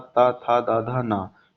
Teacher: जो आपके मुख के ऊपर वाले दांत होते हैं उसमें आपकी जीभ जो है वो टच होती है, तो उसे बोलते हैं दंत।